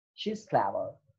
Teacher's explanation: The falling rising tone. The use of this tone involves a moderately high to low fall.